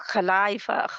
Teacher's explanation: تو یہ آپ خلائف خا کہنا ہے، خلا وہ جو ہمارا کاف اور ہا ملا کے ہم اردو میں لکھتے ہیں وہ نہیں ہوتا. ٹھیک ہے، یہ خا پیچھے سے آتا ہے موٹا